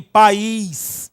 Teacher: Porque o I está sendo fortemente pronunciado, portanto, elemento vocálico fortemente pronunciado é vogal. Tudo bem? E o A é sempre vogal, 2 vogais, 2 sílabas.